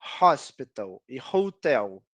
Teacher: em algumas palavras como hospital e hotel, o H é pronunciado, então essas palavras começam com som de consoante